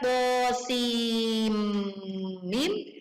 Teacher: Ketika kita membaca to, sim, mim, kenapa ini menjadi sim dan bukan sin? Karena nun sukun di akhir huruf sin bertemu dengan mim di depannya, maka akan melebur sehingga langsung masuk ke huruf mim